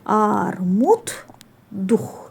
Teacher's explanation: sondakı cingitli samitlər öz karşılığı kimi tələffüz olunur. Yəni biz burda D-ni T kimi tələffüz eləyəcəyik.